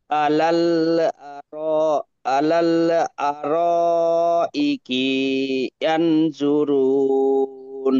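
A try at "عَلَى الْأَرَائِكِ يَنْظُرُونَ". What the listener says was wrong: কিতে টান নেই এখানে, এটা হারাকাত, তাই না? এখানে টান দেব না। আরাইকি ইয়ানজুরুন, কাফে টান নেই একদম, এটা হারাকাত, জবর জিম পেশকে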